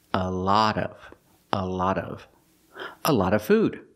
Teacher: The vowel is a short ah, like hot and stop. Not the sound ah, like law and automobile, but the sound ah.